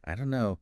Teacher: we often hear it as I don't know the don't and no just merge. >> So becoming aware of this linking is really important for understanding and for sounding more natural yourself.